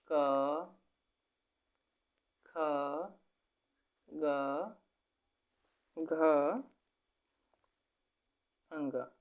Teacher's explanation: ये कंठ से बोले जाने वाले व्यंजन है